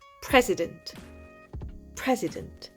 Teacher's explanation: L'accentuation est sur le début du mot. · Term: accent tonique